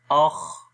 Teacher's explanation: اب یہ خا کے اندر بھی سانس جاری ہوا تو یہ خا کی صفت ہے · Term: حمز